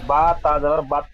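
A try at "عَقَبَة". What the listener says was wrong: বা তাজাবার বাদ নয়। আয়তের শেষে গোলতা হা সাকিন করে পড়তে হবে, তাহলে বা হাজাবার বা হবে।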